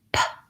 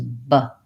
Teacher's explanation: when I say p, I should have a puff of air and I can hear the noise. My voice is not on, versus b. Same exact lip position, but my voice is on. · the P is voiceless and the B is voiced. So whatever position of a word it's in, when I say p, I should have a puff of air and I can hear the noise.